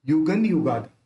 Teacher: बिंदी वाला जो अक्षर है उसके बाद वाला अक्षर यू है उसको बोलते समय होट मिलते नहीं है तो अपन इसका उच्चारण भी न ही करेंगे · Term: बिंदी का न उच्चारण